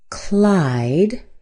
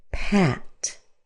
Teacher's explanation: Now notice how much longer Clyde is than Pat. Clyde is a little bit longer. Pat is a little bit shorter. And it has to do with that final sound. · In fact, it rhymes with cat. Now notice how much longer Clyde is than Pat. Clyde is a little bit longer.